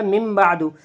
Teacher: قلب کا قاعدہ یہ ہے، نون ساکن اور تنوین کے بعد اگر با آوے گا تو قلب ہوگا، یعنی نون ساکن اور تنوین کو میم سے بدل کر غنے کے ساتھ پڑھیں گے